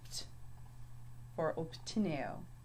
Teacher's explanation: Notice this has more of a P sound than the B sound.